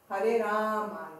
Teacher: Rama, então outro diacrítico que é uma vogal longa, que é 2 matras. Matras é o tempo.